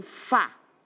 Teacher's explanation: Eu tenho o Fá, do fácil mais forte. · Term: paroxítona